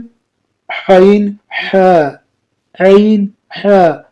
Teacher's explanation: حلق کے درمیان والے حصے سے ادا ہوتے ہیں۔ جو عین ہے اور حاء ہے، یہ حلق کے درمیان والے حصے سے یہ حرف جو ہوتی ہے وہ ادا ہوتی ہے۔